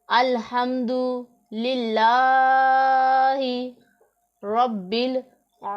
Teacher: आइन के ऊपर खड़ा ज़बर है उसे 1 अलिफ के जितना लंबा करेंगे। · रा के ऊपर ज़बर है तो रा को पुर पढ़ेंगे, मोटा पढ़ेंगे। और बा के ऊपर शद है तो बा को हम 2 दफ़ा पढ़ेंगे। · बा के ऊपर शद है तो बा को हम 2 दफ़ा पढ़ेंगे। 1 दफ़ा अपने से पहले मुतहर्रिक हरफ के साथ मिलाकर, दूसरी मरतबा खुद अपनी हरकत के मुताबिक ज़रा रुक कर।